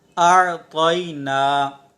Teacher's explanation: طا حروف مستعلیہ میں سے ہے اور حروف مستعلیہ کو پر پڑھیں گے۔ اچھا، اگر ہم اسے پر نہیں پڑھیں گے نا تو تا کی آواز آئے گی، اعطینا، تو تا یہاں پر نہیں ہے، ٹھیک ہے، تا نہیں ہے بلکہ یہاں پر طا ہے، اور طا حروف مستعلیہ میں سے ہے۔